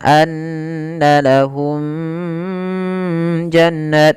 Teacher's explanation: Suara mimnya harus dibaca dengan jelas dan tidak ditahan atau ditandai dengan gunah. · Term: izhar syafawi